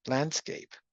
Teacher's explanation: Um, if I have the word landscape, I actually can have a nasalization here. So the the e in landscape is slightly nasalized.